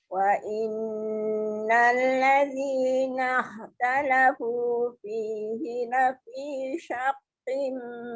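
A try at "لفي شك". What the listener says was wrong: Jangan syaqim. Lafi syakim ki nipis je. dia tak tebal. Syakim nipis kaf. Dia kalau qim tu dia jadi qaf.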